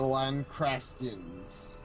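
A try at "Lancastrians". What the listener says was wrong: And different, because this time you put an I in there.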